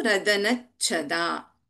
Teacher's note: We have Alpaprana Cha as well as Mahaprana Cha here.